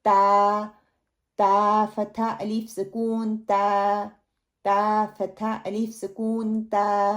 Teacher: تا جو ہے میری زبان کی نوک اوپر والے سامنے والے جو مسوڑے ہیں ان کو لگنے سے ادا ہوگا. جو باریک تا ہے جس کے اوپر 2 نقطے ہیں, ٹھیک ہے, تا, تا فتح الف سکون تا, تا فتح الف سکون تا.